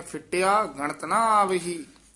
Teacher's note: ਫਿੱਟਿਆ ਪਦ ਤੇ ਯਮਕ ਲਾ ਕੇ ਉਚਾਰਨ ਕਰਨੇ ਹੈ